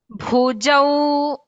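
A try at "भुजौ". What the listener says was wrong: Jakara, you should not stress. Bhakara is Mahaprana. Jakara is Alpaprana. So, Bhujau.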